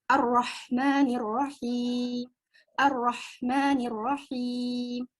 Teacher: Nah, untuk ro ini, ro memiliki sifat takrir. Takrir itu ujung lidah bergetar.